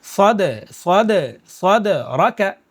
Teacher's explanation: صد قلقلہ بھی ہوگا کیونکہ قاف تا با جیم دال میں سے دال آ رہا ہے